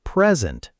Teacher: That's a thing, a gift, so it's present. Stress on the first part.